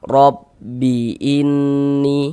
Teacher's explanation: Maka huruf ro dibaca tebal dibaca tabkhim sehingga pangkal lidah kita naik terangkat ke atas. Kita tebalkan huruf rnya. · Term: dibaca tafkhim